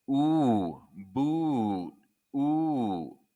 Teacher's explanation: You're going to pucker your lips forward and push your tongue high and back. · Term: ooh sound